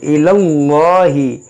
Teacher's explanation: यहाँ पर इसमें जलालत से पहले ज़बर है, तो इसको मोटा पढ़ेंगे